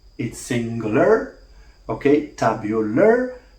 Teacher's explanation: It's singular, okay, tabular, l, because they share something which is, okay, liquidity. Both of them are liquids. So dissimilation here is dissimilation of place of articulation. Okay, so we have two liquids, the lateral liquid and the retroflex liquid.